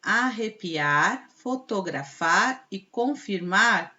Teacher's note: são oxítonas ou seja a última sílaba é a sílaba tônica